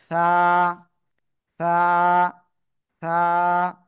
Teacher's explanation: ওকে, দেখেন এই অক্ষরটা জিহ্বার আগা উপরে দুই দাঁতের আগায় লাগান, লাগিয়ে হালকা বাতাস বের করে নরম আওয়াজে এক আলিফ টানিয়ে উচ্চারণ করেন